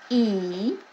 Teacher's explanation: if you say the vowel sound E, it gets in a pretty high harmonic. E, and now I'm going to say the exact same pitch, but I'm going to say it a different vowel sound.